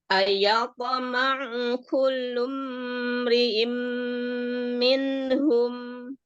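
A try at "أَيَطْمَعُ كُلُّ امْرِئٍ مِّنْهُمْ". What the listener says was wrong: Iya, mim sukun jangan terlalu lama menahan bainiahnya. Kullum ri'im, cukup. Mim sukun jangan terlalu lama bainiahnya ya. Hanya menjelaskan bainiah setingkat naqisah. Ya, naqisah, setingkat naqisah. Jadi kurang sempurna karena dia memang sukun izhar kan? Ya, sukunnya sukun izhar, jelas gitu. Jadi nggak ada tambahan gunnah. Ada gunnahnya karena memang mim kan huruf gunnah.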